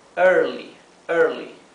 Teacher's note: Traten de pronunciar la R como la R inglesa. Con la lengua bien hacia atrás, atrás del paladar.